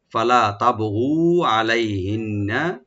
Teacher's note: নুন মোসাদ্দেদ এখানে ওয়াজিব গুন্না একালে পরিমাণ গুন্না করবো, টান হবে না,